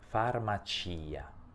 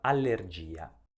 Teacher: pronuncio la i perché su questa i si trova l'accento tonico della parola Quindi è una i molto importante non posso evitare di pronunciarla